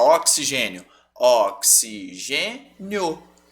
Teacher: Na nossa pronúncia, o o, que é a vogal, tampa quase que completamente o som do i.